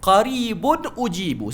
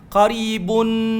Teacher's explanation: kalau dia sambung, dia tak boleh dengung. Dia kena baca straight forward. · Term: izhar